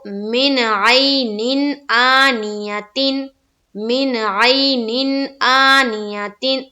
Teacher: یہاں پر بھی اظہار کریں گے، یعنی کہ نون کی آواز کو ظاہر کریں گے۔ تو من عین آنیتن، من عین آنیتن، یہاں دو جگہ اظہار ہوا، یہ نون ساکن کے بعد عین اور تنوین کے بعد حمزہ۔